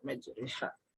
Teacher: Imalah adalah pembacaan fathah yang miring ke kasroh gitu ya. Ro dibaca re dan huruf ro-nya dibaca dengan tarkik atau tipis.